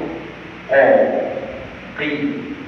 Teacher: Qaf dengan kaf dia punya tempat keluarnya adalah pangkal lidah.